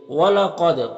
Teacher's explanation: قاف حروف مستعلیہ میں سے پر پڑھیں گے، دال میں قلقلہ ہوگا